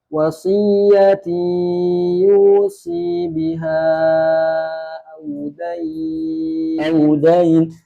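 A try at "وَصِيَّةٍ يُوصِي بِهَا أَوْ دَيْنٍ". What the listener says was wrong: Nah itu.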